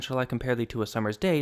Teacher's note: Summers has the accent on the first syllable, making it what's called a troy, like syrup. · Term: trochee